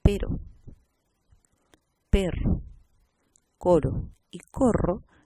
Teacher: Por ejemplo, un ejemplo clásico para nuestro idioma: distinción o la diferencia entre vibrante simple y vibrante múltiple, que implica una diferenciación significativa en posición interior de la palabra.